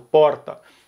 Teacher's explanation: em São Paulo capital geralmente é comum o r enrolado